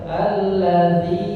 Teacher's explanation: jangan lupa allazi panjangkan 5 harokat ya